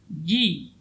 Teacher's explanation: huruf ja tidak boleh keluar udara, ya, dari tengah-tengah lidah